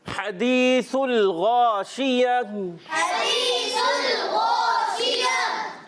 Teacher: اب دیکھیے یہاں پر ہا، یہاں ہم نے سٹارٹ کیا تو ہا اور یہاں پر ہا، اب یہ ہا جو ہے حلق کے درمیان والے حصے سے، اور کلیئر کر کے ادا کریں گے، یا مدہ کو ایک الف کھینچیں گے۔ · سا کو سین سے نہیں بدلنا، اس کو بہت زیادہ کلیئر ادا کریں گے